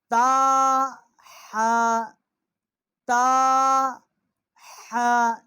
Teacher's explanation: یہ حا جو ہے اس کا جو مخرج ہے یہ وسط حلق سے جو ہے اس کا مخرج ہے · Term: حروف حلقی